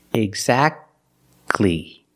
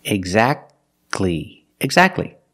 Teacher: Now let's talk about situations when the T is silent. The T is silent when it's between consonants.